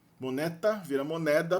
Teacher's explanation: Então, moneta no latim, você vê que o T, que era surdo, virou sonoro D.